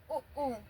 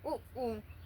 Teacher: ओष्ठ, इसमें मुंह गोल हो जाए, ओठों से बोला जाए उ ऊ। आप भी बोल के देख सकते हैं, ओठ से बोले जाएंगे। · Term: ओष्ठ स्वर